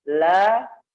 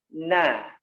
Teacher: Kalau la ke gigi, kalau na ke gusi